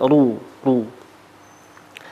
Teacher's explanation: ketika dhammah dengan membulatkan bibir, yakni ru. Ruwaida, bulat bibirnya, ru, ru.